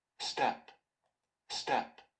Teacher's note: the second word is not aspirated